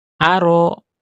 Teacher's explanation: maka ketika kita baca a, maka tidak ada udara yang mengalir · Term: huruf hamzah